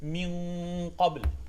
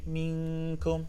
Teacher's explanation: The difference between Qaf and Kaf is with Qaf you're going to do tafkhim, while with Kaf there's no tafkhim.